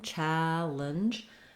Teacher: I'm almost saying it without any vowel at all in the second syllable.